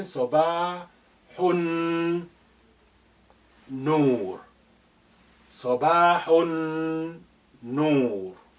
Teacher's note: Lam is silent here because noon is your sun letter. It's carrying shadda. So therefore, the sukun on lam of al has been removed.